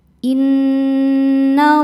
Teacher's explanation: Alif lamnya dinamakan alif lam syamsiyah karena alif lam berhadapan dengan huruf syamsiyah yaitu lam. Cara bacanya alif lam tidak dibaca. Innallaha. Allah hukumnya adalah mad tabi'i muqaddar karena ada huruf lam dengan harokat fathah panjang.